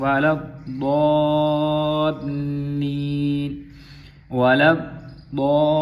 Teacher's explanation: ضاد کے اوپر مد ہے 5 الفی، اس کو لمبا کریں گے